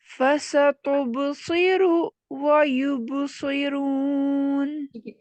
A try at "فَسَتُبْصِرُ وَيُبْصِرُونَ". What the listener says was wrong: پاس نہیں دے بیچ میں، ساتھ ملا کے پڑھیے. فَسَتُبْصِرُ وَيُبْصِرُونَ. ایسے رکے نہیں. فَسَتُبْصِرُ وَيُبْصِرُونَ ایسے نہیں پڑھے. فَسَتُبْصِرُ وَيُبْصِرُونَ. دیکھیں ملا کے پڑھنے سے کیا ہو رہا ہے کہ آپ کا را کا جو ضمہ ہے وہ کھینچ رہا ہے، ٹھیک ہے، اس کو کھینچ رہی.